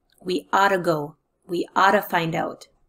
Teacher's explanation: you don't hear the two T's in the middle they reduced down to a sound of D